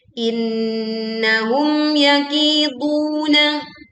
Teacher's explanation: Kita membaca jelas mim sukun, tidak melebur ke ya, tidak juga terputus, tidak juga memantul. · Ki, du sama-sama panjang 2 harokat.